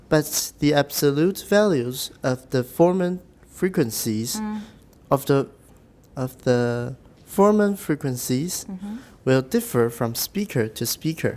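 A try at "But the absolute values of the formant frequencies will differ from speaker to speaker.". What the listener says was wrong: 第一个 speaker 要低一点 because it's not the tonic. You don't have to, you said that your 技巧 was making your voice higher, but you don't have to 刻意把声音弄得高. 你不是因为声音高，你是因为你调整过来了. So 你不用刻意高.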